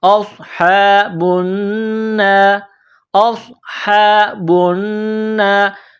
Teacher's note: نون میں آواز ناک میں چھپانی ہے، غنہ کرنا ہے · اصحاب النار، حمزہ کو صاد کے ساتھ پلس کرنا ہے، صاد کو موٹا کرنا ہے، صاد میں سیٹی کی آواز پیدا کرنی ہے. حمزہ صاد زبر اوس، ہا کڑا زبر ہا، اوس ہا.